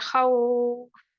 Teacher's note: वक्त के दौरान हरफलीन की अलामत 4 से 6 हरकत के बराबर खींचकर वक्त की जाएगी। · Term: मद्दे लीन